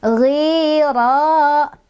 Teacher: Ra-nya yang pertama dia punya hukum tafkhim atau dibaca secara tebal karena ra-nya barisnya fathah ya. Yang kedua, di ra juga ada mad tobi'i karena ada fathah berdiri nih, pengganti alif ya.